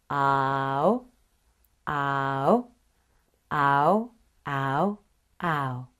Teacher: The tip of your tongue is relaxed and touching behind the lower front teeth. Your tongue moves from front low, ah, to back high, oh, in a very big movement. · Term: ow sound